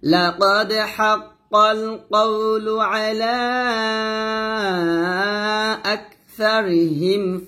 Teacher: লিপ টান দিবেন আকসারিহিম আকসা না বলতে হবে আকসা পাতলা করে এখানে সাটা পাতলা হবে আর কাফটা হামস হবে